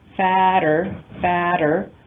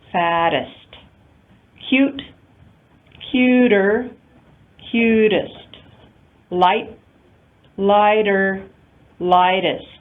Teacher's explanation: the pronunciation of the comparative form in American English, fatter, fatter, that's a flap T